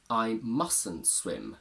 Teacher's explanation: I mustn't swim, where the first T disappears completely